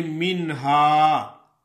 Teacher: کہ بتایا گیا تھا کہ نون ساکن اور تنوین کے بعد حروف حلقی میں سے کوئی حرف آ جائے تو وہاں ظاہر کر کے نون کو پڑھا جاتا ہے، یعنی بلا غنہ بغیر غنے کے نون ادا ہوتی ہے